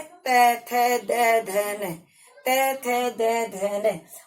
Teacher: दंता मतलब दांत, मतलब जिन वर्णों का उच्चारण करते समय हमारी मुख की जीवा दांतों को स्पर्श करती है वो दंता कहलाते हैं